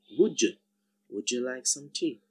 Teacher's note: the first sound of you is Y, and they combine to give us a new sound, J